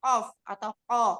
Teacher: Qaf ini sifatnya jahar ya. Nafasnya tertahan, kemudian suaranya juga tertahan, disebut dengan syiddah. Kemudian dia pangkal lidahnya ini terangkat sehingga disebut isti'la, akan tetapi rongga mulut terbuka disebut infitah, cara mengucapkannya ismat.